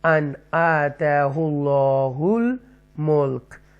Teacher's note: کہتے ہیں، یا ان انگلش میں 6 تھروٹل لیٹرز کہتے ہیں۔ تو یہاں اظہار کریں گے، نون کے ساؤنڈ کو کلیئر پڑھیں گے